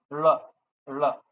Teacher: I'm bending my tongue a bit more, especially the lateral positions.